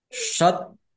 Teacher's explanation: wau sukun mad thobii panjang dua harakat